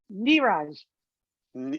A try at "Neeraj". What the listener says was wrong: it's like you're saying it as French. It's Indian. Neeraj.